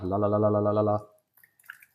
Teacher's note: light L at the beginning that's the normal L that most people will use so you put your tongue on the roof of your mouth